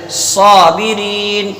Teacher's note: جب صاد کو ادا کریں گے تو زبان کو اوپر اٹھائیں گے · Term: صفت استعلا